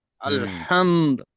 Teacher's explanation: দালের উপর পেশ ছিল কিন্তু এখানে থামতে গেলে কি করতে হবে সাকিন হয়ে যাবে